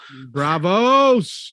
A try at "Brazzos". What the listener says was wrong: Brazzos with a Z.